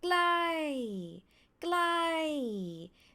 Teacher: the word ใกล้ you see this is falling tone from high to low, falling tone.